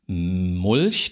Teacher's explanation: Da legen Sie beide Lippen aufeinander. Dann geht der Stimmenton an. Die Luft entweicht über die Nase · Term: Nasaal